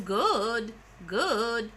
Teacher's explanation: Or you tell with the fall-rise tone good, good. There's a shake there in your voice. It shows that you have reservations.